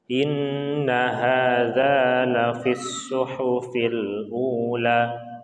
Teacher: Ini disebut dengan gunnah, ya, ada nun bertasdid, maka kita harus tahan 2 harokat